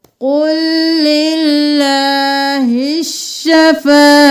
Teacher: قُلْ لِلَّهِ الشَّفَاعَةُ، یہاں پر ہم اسلام کو نہیں پڑھیں گے، قوف کو اسلام کے ساتھ ملائیں گے، قوف موٹا پڑھیں گے